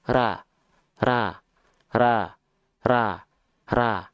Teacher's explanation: pangkal lidahnya masih turun makanya masih vokal a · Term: istifal